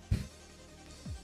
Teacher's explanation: La P suena p, es oclusiva, bilabial y sorda.